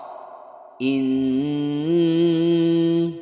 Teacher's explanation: cara membacanya harus berdengung berdengungnya ditahan 3 atau lebih ya tiga ketukan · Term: ghunnah musyaddadah